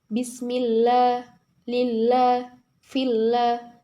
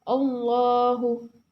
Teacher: ketika lam jalalah didahului kasrah cara membacanya yaitu tipis bismillah lillahillah berbeda dengan ketika tafhim yaitu tebal ketika didahului fathah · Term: lam jalala tarqik